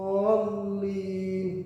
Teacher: Waladhdallin, dallin, mad tabii bertemu dengan huruf yang bertasydid. Dallin, harus dibaca panjang 6 harokat atau 6 ketukan, atau juga dinamakan 3 alif panjangnya. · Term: mad lazim kilmi musaqal